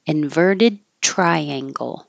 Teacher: Inverted, hold the D because you'll release the airflow with the T.